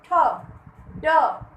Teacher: आपका जीभ जहां जाके छू रहा है वो मुर्धा है